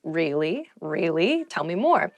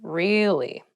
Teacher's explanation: you can use it to show you are interested in a conversation with upward intonation